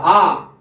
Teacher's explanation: विवृत्त का मतलब होता है खुला हुआ, मुंह सबसे ज्यादा खुला रहेगा आ, अब थोड़ा सा बंद होगा अर्ध विवृत्त में आ ओ ऐ।